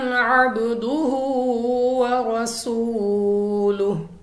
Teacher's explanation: आइन कनेक्ट है, मिल रही है बा से, तो बा हमारे पास हरूफे कलकला में से है, तो हमने वापस निकलती हुई आवाज़ के साथ पढ़ना है। हा को उसके मखरज से अदा करना है, थोड़ा लंबा भी करना है क्योंकि उल्टी पेश है।